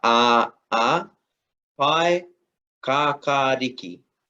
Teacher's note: just notice that we do have uh our lengthen vowel just after the k